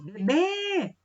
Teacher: a sílaba mais forte é aquele último B ali acentuado, né? Com um acento circunflexo. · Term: oxítonas